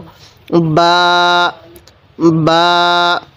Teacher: বা, এই বাটা দুই ঠোঁট থেকে উচ্চারণ করব, দুই ঠোঁট একসাথে লাগিয়ে এই বাটিকে উচ্চারণ করব।